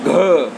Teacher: सघोष में घ, ये महाप्राण है